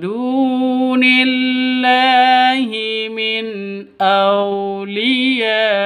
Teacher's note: [Tepuk tangan] Ini lahi ini lafzul jala lafdul jalalah. Lafdul jalalah itu kalau ada di tengah atau di depan itu panjangnya hanya dua ketukan.